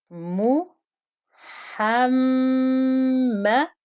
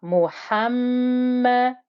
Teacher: the mim with the shadda means you must hold the ghunna before you pronounce the fatha. So you hear the hold of the ghunna before you hear the fatha.